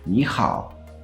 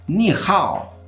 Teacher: now that's the second tone and a third Tone